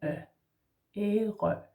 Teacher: So we say Æ, like æble, then you have an R in the throat, Æ, and then Ø, Ærø.